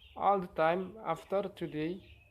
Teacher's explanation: T aspirate when initial in time.